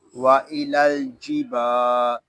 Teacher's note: با کو ہم ایک الف تک کھینچ کر پڑھیں گے کیونکہ یہاں پہ الف مدہ ہو رہا ہے